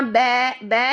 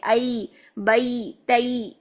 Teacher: या की तरफ, या की तरफ आपका मोड़ पैदा होना चाहिए।